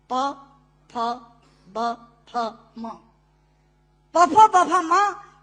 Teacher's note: दोनों होंठ मिलाकर बोले जा सकते हैं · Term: ओष्ठांग